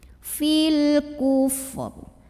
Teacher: Fil namanya alif lam qamariyah karena alif lam ketemu huruf qamariyah yaitu kaf. Maka cara baca alif lamnya adalah diidharkan atau dibaca dengan jelas bunyi lamnya atau biasa disebut dengan idhar qamari.